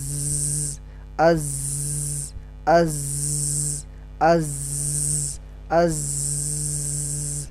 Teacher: zai termasuk huruf jahr, yang artinya ada udara yang tertahan dan pita suara tidak terbuka seperti ketika mengucapkan huruf-huruf hamas.